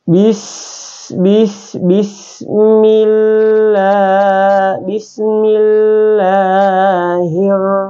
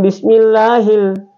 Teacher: Alif lam syamsiyah itu hukumnya dia adalah tidak disebut atau huruf di depannya itu langsung masuk ke huruf berikutnya. Di alif lam syamsiah ini tidak disebut, tapi dia tertulis tapi tidak disebut.